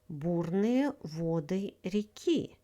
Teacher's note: In the word вода, stress falls on the second syllable. Воды is the plural form of the word вода. Stress falls on the first syllable.